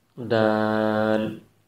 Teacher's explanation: دال کو اگر ہم گہرائی میں جا کے دیکھیں تو دال، الف اور لام، اور اس کے درمیان میں جو الف ہے اس کے اوپر مد لگا ہوا ہے، جس کی وجہ سے اس کو ہم 5 الف کے برابر کھینچ کے پڑھیں گے،